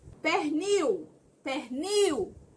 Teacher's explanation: Observe que o L tem som de quê? De U. Então, esse L vai ser semivogal.